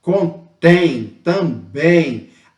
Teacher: tônica então quando eu tenho a última sílaba tônica Ou seja a última sílaba né com um valor sonoro mais forte